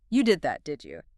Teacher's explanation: That sharp rising tone on did you?